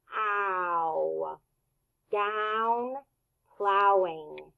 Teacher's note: it's a diphthong because your mouth moves two different ways